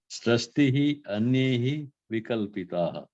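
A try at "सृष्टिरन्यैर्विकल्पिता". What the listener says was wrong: Good. Vikalpit, not taha. That's the visarga at the end.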